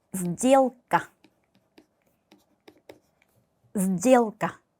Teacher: 그런데 바로 뒤에 따라온 알파벳 느는 유성음이에요. 이럴 때 유성 앞에 있는 무성음, 이 스는 짝꿍이 되는 유성음 z로 발음이 됩니다. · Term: 무성음의 유성음화